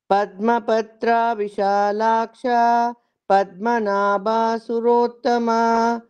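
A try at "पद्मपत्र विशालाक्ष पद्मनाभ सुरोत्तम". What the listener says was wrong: ಪದ್ಮಪತ್ರ ಅಂತ ತ್ರಾ ದೀರ್ಘ ಮಾಡ್ಬೇಡಿ, ನಾಭಾ ಅಂತ ಭಾ ದೀರ್ಘ ಮಾಡ್ಬೇಡಿ. ದೀರ್ಘ ಮಾಡ್ಬೇಡಿ, ಹ್ರಸ್ವ ಮಾಡ್ಕೊಂಡು ಹೇಳಿ.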